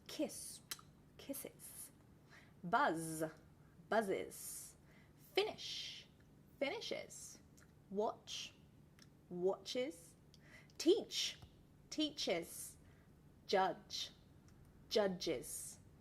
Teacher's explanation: so there you can hear that the single syllable then became two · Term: extra syllable